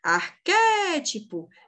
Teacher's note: o acento aqui na proparoxítona o acento na anti penúltima sílaba